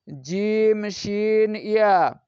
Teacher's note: জিহ্বার মধ্যখান তার বরাবর উপরের তালুর সঙ্গে লাগিয়ে উচ্চারিত হয়